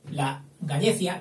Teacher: Este diptongo AE, yo lo pronunciaré siempre E, como me han enseñado